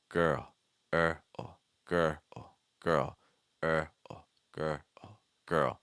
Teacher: we want to go down in pitch and we want to get weaker, almost like you're whispering it. So lower pitch into almost a whisper on the It's like and after that we can then add our initial sound.